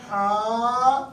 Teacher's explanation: ہم نے کہنا ہاں تو الف بھی باریک ادا ہوا. ہاں باریک ہے تو الف کی آواز خود بخود باریک نکل رہی ہے